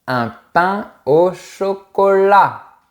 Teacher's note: On ne prononce pas la lettre T du mot chocolat.